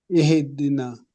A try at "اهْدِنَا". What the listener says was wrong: Stay on the ha. It's like you do like, big sigh.